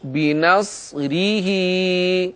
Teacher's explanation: اور اس کے بعد ہا کے نیچے کھڑی زیر ہے، اور اس ہا کو ہم ایک الف کے برابر کھینچ کر پڑھیں گے۔